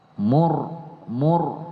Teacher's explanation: ro sukun diapit oleh satu huruf berbaris damah dan satu huruf berbaris fathah itu Dibaca juga tebal